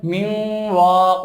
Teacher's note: নুন সাকিনের পরে ওয়াও আসছে, নুনটা ওয়াও এর সাথে মিলে যাবে এবং গুন্না হবে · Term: গুন্না সহ ইদগাম